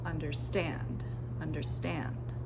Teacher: So you can hear that the first two syllables under were unstressed, and then I put that stress on the third syllable, understand, understand. Third syllable longer and louder